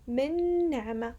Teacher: I made a ghunna, as if there are two noons. Min ni'ma. That's an identification that we did merge the two letters together.